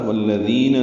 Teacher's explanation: ذال اس میں نرمی سے ادا کرتے ہیں اور دو حرکات لمبا کرتے ہیں